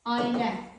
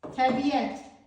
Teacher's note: Y samiti artırılır ortaya.